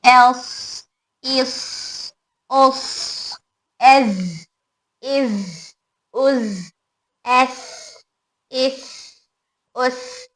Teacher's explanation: सफीर की वजह से इनके अंदर सीटी की आवाज पैदा होगी